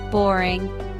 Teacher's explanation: Boring. Two-syllable word. Stress is on first syllable.